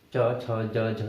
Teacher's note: जब आप ई को उच्चारित करेंगे, ठीक है, और च वर्ग को उच्चारित कीजिए, च छ ज झ, तो आपकी जिह्वा आपके तालु को स्पर्श कर रही है, ठीक है। तो च छ ज झ ठीक है, ये आपके सारे क्या हो गए, तालु हो गए।